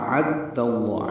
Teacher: حمزہ اقصی حلق سے، عین وسط حلق سے ادا ہوگا. اعد اللہ، عین کو دال سے ملانا ہے، دال کو لام اسم جلالہ سے ملانا ہے، لام اسم جلالہ کو دال کی زبر کی وجہ سے پر پڑھنا ہے.